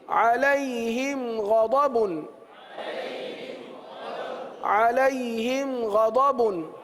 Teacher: اظہار شفوی کا قاعدہ ہوگا، یعنی غنہ نہیں کریں گے